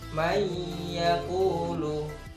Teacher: Mayyakulu, nun mati bertemu dengan ya. Jadi cara bacanya itu harus berdengung ya, sekitar 2 ketukan. Mayyaqulu. Jadi bacaan iya itu seakan-akan masuk kepada nun.